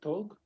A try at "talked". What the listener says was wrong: Talked. With T at the end. The pronunciation is with T. You write it with ed at the end, but the pronunciation is like T. Talked. But the pronunciation is like T, talked.